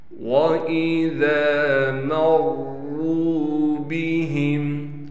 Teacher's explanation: را پر تشدید ہونے کی وجہ سے ٹھہراؤ بھی کریں گے، را کو موٹا بھی پڑھیں گے، را کے بعد واو ہونے کی وجہ سے را کو ایک الف کی مقدار کھینچیں گے بھی۔